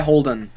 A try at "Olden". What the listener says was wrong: No H. Olden.